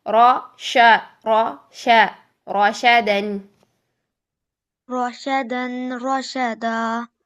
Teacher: रशदन रशदा रोशा नहीं, रोशा शा। शीन की आवाज बारीक है, रॉ की मोटी है। रॉ की आवाज ओ, शीन की आवाज आ।